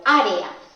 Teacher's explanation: En la palabra área también tenemos dos vocales fuertes, en este caso no están repetidas, es una E y una A. Así que al pronunciarla las separaríamos porque formarían un hiato y se separarían en dos sílabas diferentes